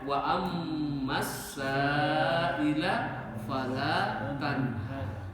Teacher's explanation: Maka makhrajkan itu mim yang tasdid dari khaisum